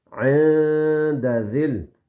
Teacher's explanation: نون کی آواز کو ہلکا سا ناک میں چھپانا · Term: اخفا